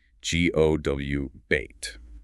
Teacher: Your lips are already rounded for that back vowel, so the minimal effort transition is the W glide. Go about is pronounced with a W connecting the two vowels. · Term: labiovelar glide